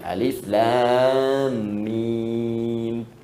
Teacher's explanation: alif harful hawa. Lam ke lisan, mim di bibir.